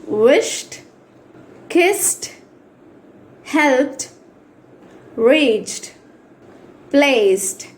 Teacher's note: ఈ డి తో ఎండ్ అయినప్పటికీ ట అని ప్రొనౌన్స్ చేయాలి